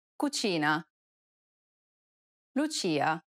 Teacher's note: this sound is identical to the ch in church the only difference though is that it's stressed even more in italian than it is in english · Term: ch sound